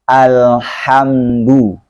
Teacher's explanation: Nah, di sini ada dal. Dalnya pengucapan Al-Quran itu lembut. Tidak kasar, juga tidak dibaca tebal.